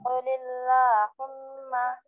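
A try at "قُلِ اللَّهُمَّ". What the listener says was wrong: नहीं लाम मोटा हो जा रहा ना माँ, लाम बारीक होना है।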